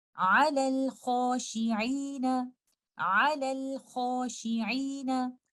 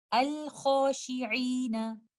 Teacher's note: In both cases, I will recite letter lam with idhar. · We recite letter lam clearly and you see sukoon on letter lam. Whether you are starting your recitation from hamzatul wasl or you are joining letter lam with the previous word, in both cases you can hear letter lam clearly. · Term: idhar al-qamari